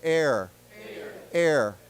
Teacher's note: So when we say heir, we don't pronounce it hair. It's pronounced without the H.